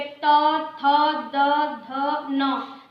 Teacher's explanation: ऐसे ही आप बोलेंगे त, थ, द, ध, न, दांत जो है हमारी जीभ जो है दांतों से टकरा रही है